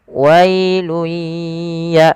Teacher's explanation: Dan ditahan kemudian ditahan suara ya dua harakat. Wailuya sambil masukkan ke rongga hidung sedikit. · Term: idgham biah, idgham, idgham bi gunnah